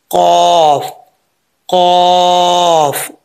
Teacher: नरम तालू से लगेगा तो कफ पड़ा जाएगा